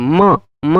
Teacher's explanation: म बोलते हैं तो थोड़ा नाक का भी प्रयोग होता है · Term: अनुनासिक